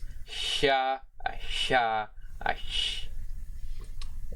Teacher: this is the voiceless alveolo-palatal sibilant fricative consonant. Sometimes it's called palatal, but it's technically alveolo-palatal, as way too much research will get you.